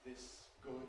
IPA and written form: ˈðɪs ˈgʊd (this good)